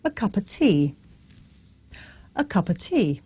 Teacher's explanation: the words a and of become schwa